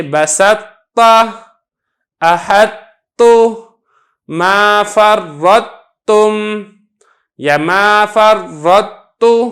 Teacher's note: جب طا کا تا کے اندر ادغام کرتے ہیں تو جو طا کی صفت اطباق ہے یہ باقی رہتی ہے